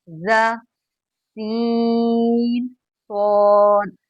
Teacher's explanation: तो सीटी वाले हुर्फ हमारे हैं तीन। तीन हुर्फ में हमारे सीटी निकलेगी, जा, सीन और सौद। हम आप इसको किसी भी तरह पढ़ लें, हमारे मुंह से, हमारे होठों से सीटी निकलेगी, हमारे मुंह से सीटी निकलेगी।